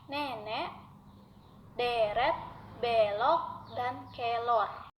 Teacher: Menjadi agak singkat karena posisi lidah berada lebih rendah apabila vokal E itu berada pada suku kata tertutup.